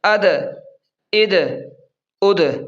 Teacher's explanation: یہ دال بھی حروف قلقلہ میں سے ہے، اسے بھی تھوڑا سا پڑھتے وقت ہلائیں گے یعنی قلقلہ کریں گے۔